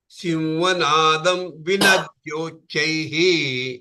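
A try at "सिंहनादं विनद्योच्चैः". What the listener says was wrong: When you have that dam and v coming as a sandhi, Simhanadau vinat, not dam vinat yochaihi, dau vinat yochaihi. Simhanadau vinat yochaihi.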